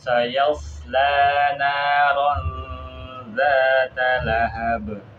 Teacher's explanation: sayanya jangan sampai terpengaruh huruf shad, jangan menebal, ikut nebal. Terus yang mana yang panjang berikan hak panjangnya, matnya.